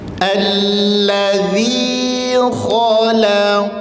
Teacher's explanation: Kha tebal, lam tipis, qaf tebal.